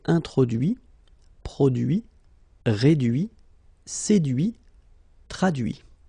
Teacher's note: final T not pronounced